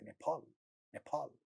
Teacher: in the beginning of the stressed syllable there is a pa sound, so they make it aspirated